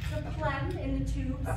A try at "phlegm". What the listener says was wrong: It's pronounced phlegm. You pronounce the H.